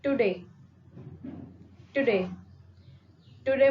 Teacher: जो आपका to है, इस पे आप बहुत कम emphasize कर रहे हैं, जबकि आप जो ज्यादा emphasize कर रहे हैं वो day पे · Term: unstressed syllable